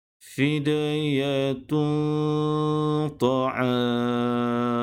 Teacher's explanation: Tanwin berbaris 2 di hadapan dan selepasnya terdapat huruf ta, maka perlu didengungkan dengan kadar 2 harakat. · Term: ikhfa